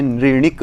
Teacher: अमूर्धन्य को हमने यहाँ पर मूर्धन्य बना दिया है। तो इस तरह से हमें पाठ नहीं करना चाहिए।